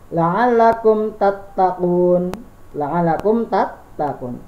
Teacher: Tidak ada samar, tidak ada dengung. Jadi langsung la'allakum tattaqun. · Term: izhar safawi